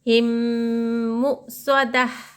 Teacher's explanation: मीम को मीम से मिलाकर गुन्ने के साथ पढ़ेंगे, गुन्ना करेंगे, सिर्फ नाक में थोड़ी देर आवाज़ को छुपाएंगे